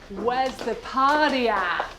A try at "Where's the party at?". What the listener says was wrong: Did you pronounce party with a D?